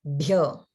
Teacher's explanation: everyone notice the bhyo in Gurubhyo is Maha prana